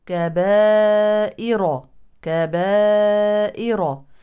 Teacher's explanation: اما هذه الراء فهي متطرفه متحركه بالفتح اذا هي وصلا مفخمه · الالف يلي همزه في نفس الكلمه اذا هو مد متصل يمد اربع او خمس حركات